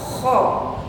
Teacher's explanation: Langit-langit di mulut kita tetapi tidak yang di luar, agak ke dalam.